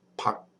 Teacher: as a final consonant that makes like an unreleased K sound, pug, so it's vegetables.